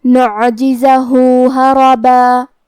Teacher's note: آخری میں ہاں پہ الٹا پیش ہے تو یہاں حکم ہے مد صلہ صغرا، ہم اپنی آواز 2 مد کے برابر لمبی کریں گے